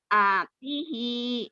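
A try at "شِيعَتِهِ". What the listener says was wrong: Ya, tapi A-nya masih ketahan. Dengerin. Ya, karena ainnya payah, ibu jadi lama ya nih. Nih, Bu. Syi'atihi. Syi'atihi. Nah, gitu. Iya, A-nya agak ketahan sedikit ya. Nah, mikirin ain.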